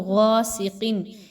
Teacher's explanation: غین اور قاف، ان دونوں کو ہم موٹا پڑھیں گے، پر پڑھیں گے، یہ حروف مستعلیہ کے لیٹرز ہیں۔